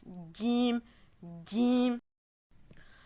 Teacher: On imagine un d au début. Donc ici la langue, elle va toucher le milieu du palais dur.